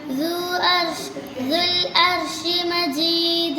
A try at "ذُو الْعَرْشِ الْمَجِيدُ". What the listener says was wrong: ഇവിടെ ദു അർഷി എന്ന് പറയാൻ പാടില്ല. ഇവിടെ ഉണ്ടോ ദുൽ എന്നുള്ള ഇതുണ്ടായതുകൊണ്ട് ദുൽ അർഷി എന്ന് പറയണം. ദുൽ അർഷി മജീദ്. ദുൽ അർഷിൽ മജീദ്.